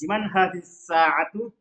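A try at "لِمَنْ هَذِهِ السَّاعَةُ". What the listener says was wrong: Coba ulang hazihinya jangan samar-samar. Ya baik, liman hadhihi sa'atu hiya li Abbasin.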